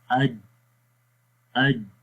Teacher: جب ہم حمزہ کو جیم کے ساتھ ملاتے ہیں تو کیا ہوتا ہے کہ سانس بند ہو جاتا ہے۔ ہم پڑھتے ہیں حمزہ جیم زبر اج اج، ٹھیک ہے، اور سانس کیا ہو رہا ہے، یہ بند ہو رہا ہے۔ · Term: شدت